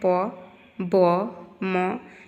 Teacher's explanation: both lips come together to obstruct the airflow. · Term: bilabial